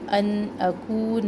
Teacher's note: ہم نون کا اظہار کریں گے کیونکہ آگے حمزہ جو ہے حروف حلقے میں سے ہے